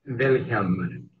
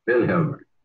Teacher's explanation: The accent on the first syllable.